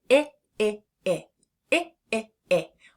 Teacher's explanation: When we say the short I sound, our mouth is much more closed than when we're doing the short A. We are having some tension in the side of our cheeks right there in the corners of our mouth.